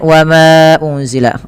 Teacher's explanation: kita hukumi dengan bacaan mad jaiz munfasil dipanjangkan hanya 4 harakat